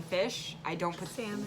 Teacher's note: We don't put the L